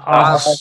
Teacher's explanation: پر ہے نا موٹا ہے یہ موٹا کر کے پڑھیں عین عین بھی موٹا اور صاد بھی موٹا اور اونچا ہاں کیا عصف عین صاد زبر عصف موٹا اور اونچا ٹھیک